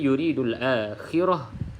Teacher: kita bunyikan ta bulat ni bunyinya seperti Huruf ha kalau kita berhenti kalau sambung terusulir kita bunyi huruf ta tapi kalau kita berhenti